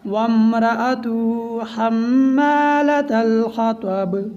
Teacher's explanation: بعض دفعہ لوگ اس میں غفلت کرتے ہیں، وامرأتہ پڑھتے ہیں، درمیان میں جو الف ہے یہ نہیں پڑھا جائے گا، واو کو میم کے ساتھ ملائیں گے